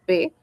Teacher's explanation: no va a vibrar nada en mi garganta. Yo digo, "No vibra." En cambio, con la letra B es diferente.